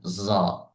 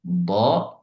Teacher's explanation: Jadi bedanya bo dengan zo. Ini kalau zo itu ada sekalian dengan hembusan anginnya zo. Tapi kalau bo tidak ada angin.